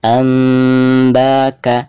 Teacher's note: suara nun sukun tersebut itu harus dirubah ke mim sukun ya Jadi tidak dibaca anbaaka ya melainkan harus di gantikan ke suara mim sukun